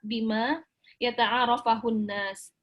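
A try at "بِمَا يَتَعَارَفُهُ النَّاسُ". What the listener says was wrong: bima yata'arafuhu. Dia enggak mansub ya.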